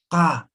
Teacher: Es postvelar, ¿no ven? Entonces, van a pronunciar desde la garganta.